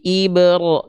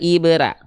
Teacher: Karena huruf ro ketika berharokat fathah itu harus dibaca dengan mufahomah atau tafkhim atau tebal.